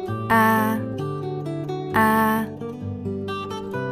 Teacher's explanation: A, miệng mở to, rộng, vị trí lưỡi thấp nhất, môi không tròn. Phát âm giống như A của tiếng Việt.